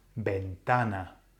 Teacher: the emphasis needs to be on the second last vowel